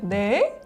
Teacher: 말끝이 올라가면요 끝이 끝나는 느낌이 아니라 계속 이어지는 연결되는 느낌을 받습니다. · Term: 말끝을 계속 올리는